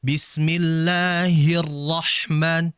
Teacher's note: Ha itu memiliki sifat hams.